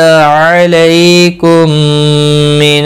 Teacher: میم کے بعد دوسرا میم مشدد آیا ہے، یہاں پر ادغام شفوی ہوگا، گنہ کے ساتھ پڑھیں گے